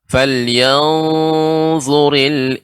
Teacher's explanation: Ya, pengucapan insa ya dibaca dengan datar saja, Ibu. Misalnya untuk falyanzu itu memang lebih harus lebih isti'la ya, za ya termasuk huruf isti'la. Falyanzuril untuk insanu dibaca dengan datar.